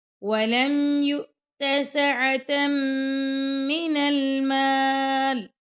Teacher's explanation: تا دو زبر میم، تم، یہاں پہ ہم غنہ کریں گے، وَلَمْ يُؤْتَ سَعَةً مِّنَ الْمَالِ، اب یہاں پہ رکیں گے تو لام ساکن ہو جائے گا۔